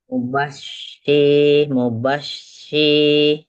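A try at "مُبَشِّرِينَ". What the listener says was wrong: Dia sama aja kayak sin, cuman dia tuh tafashi. Dia dari tengah lidah. Oh iya, masih tebal.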